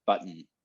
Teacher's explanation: the n in the word button doesn't have a vowel with it at all it's just it's like humming it's like there's no vowels in there i'm just making the · with it at all it's just it's like humming it's like there's no vowels in there i'm just making the n sound through my nose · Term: syllabic n